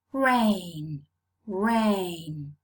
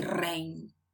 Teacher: your tongue is not touching any part of the palate. There's no contact between your tongue and the palate.